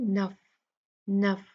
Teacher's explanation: जब हम फा पढ़ेंगे तो इसमें इसकी जो फा की हवा की क्वालिटी है हम्स, उसको हम जाहिर करेंगे